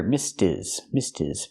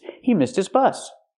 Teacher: We hear the H in his is silent because it's not a stressed word.